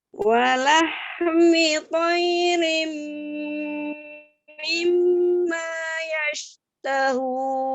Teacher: Hati-hati di huruf H-nya tidak dipantulkan, tidak walahmi ya. Alirkan udaranya, walahmi ya. Tidak walahmi, tidak dipantulkan.